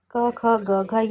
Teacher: क, ख, ग, घ ये कंठ से उच्चारित होती है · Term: कंठ ध्वनियां